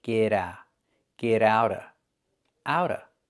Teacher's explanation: the T in get changes to a fast D because it's between vowels. Get out of Get out of out of The T in out changes to a fast D because it's between vowels.